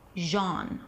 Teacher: So the first syllable is genre. Genre, it's a J sound, then the A as in father, and then an N sound, genre. The second syllable is an R sound, and a schwa, r, r.